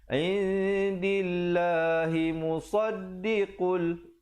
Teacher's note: Dan lafzul jalalah di sini dibacakan nipis, 2 harakat. Jangan pula kita baca tebal. Indillah, tak betul.